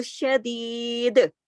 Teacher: دال کو کلکلے کے ساتھ روکیں گے اور یا کو کھینچیں گے پورا